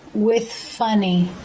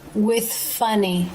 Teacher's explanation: Tongue comes through the teeth for the TH, and the bottom lip raises to touch the bottom of the front top teeth for the F sound. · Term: unvoiced TH